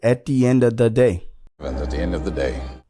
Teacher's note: there was no v sound there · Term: connected speech